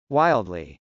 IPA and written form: wˈaɪldli (wildly)